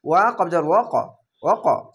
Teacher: এখানে কলকলা ধাক্কা মেরে উপরে সাউন্ড যাবে